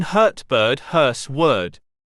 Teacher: this is a central vowel it is commonly used by English speakers as a hesitation sound